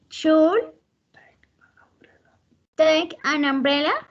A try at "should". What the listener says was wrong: And here, the pronunciation of should, don't say L, don't pronounce the L, only should, okay? Should. L is not necessary to pronounce it.